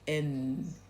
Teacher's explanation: when it's just N, then the front of the tongue, the front of the tongue touches behind the top teeth. So you get n and then if you had a th it would be n. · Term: ordinary N